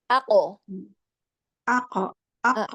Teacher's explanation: sekarang qafnya itu pangkal lidah belakang ketemu langit-langit yang tengah. Yang lunak ya.